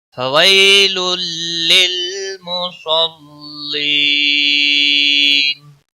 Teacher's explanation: یا مدہ کے بعد وقف کی صورت میں جب نون ساکن ہوگا تو 3 سے 5 سیکنڈ کھینچ کر وقف کریں گے